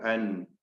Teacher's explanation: നാവിന്റെ അറ്റവും മേലെ മോണയും ചേർത്തുകൊണ്ടാണെന്ന് മനസ്സിലാക്കണം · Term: നൂൻ